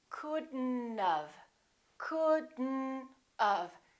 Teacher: We pronounce the D and then we connect the D next to the N, and then the O disappears, but the T also disappears.